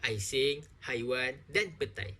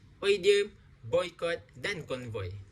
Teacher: Diftong dikenali sebagai vokal rangkap, iaitu penghasilan dua bunyi secara serentak kerana berlakunya geluncuran dalam satu suku kata. Diftong dilafazkan sebagai satu bunyi sahaja dan kedua-dua vokal ini tidak dapat dipisahkan.